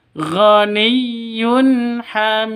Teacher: tanwin bertemu dengan Ha yunha jelas terang karena izhar halq